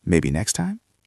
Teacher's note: your voice should go back up to show warmth.